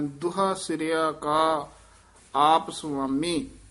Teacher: ਦੁਹਾ ਹੋੜੇ ਨਾਲ ਨਹੀਂ ਬੋਲਣਾ, ਔਂਕੜ ਹੈ, ਛੇਤੀ ਬੋਲ ਦੇਣਾ।